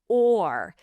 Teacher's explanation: It has that dark quality of a back vowel sound. Or. Do not lift the tongue too quickly here.